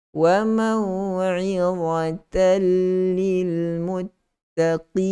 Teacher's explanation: Tanwin bertemu dengan lam terus masuk secara totally.